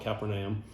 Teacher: i use the glottal stop so i call it kaepernium